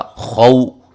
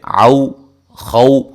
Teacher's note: واؤ سے پہلے اگر حرف آئے گا موٹا، خو، تو واؤ کی تو آواز وہی رہے گی نا، خو کہہ دیں یا او کہہ دیں، آؤ، خو، واؤ کی آواز وہی ہے، ٹھیک ہے؟ لیکن خو میں خا موٹا ہوا ہے، واؤ نہیں موٹا ہوا